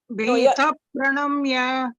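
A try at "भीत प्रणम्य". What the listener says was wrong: You are saying pa, ji. It should be fa. You are saying pa, right? Pambaram pa, correct? It is not pambaram pa. How would you say fruits? Fa, right? Fruits. Phone. Phone. The fa sound has to come. So it is bhita, bhitaf. Bhita.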